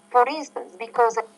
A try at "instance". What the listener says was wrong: I would say for instance. You have the bit, beat, hit, heat. That's a struggle for you. That vowel sound, the that sound is hard for you right now.